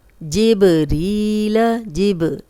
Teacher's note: बा पे जज़म है, कलकला वाला हर्फ है, हिला के पढ़ेंगे। जिबरीला री, या मदा है, 2 हरकत लंबा करेंगे।